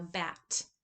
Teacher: You have that voiced d goes to an unvoiced t in anticipation of silence. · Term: Devoicing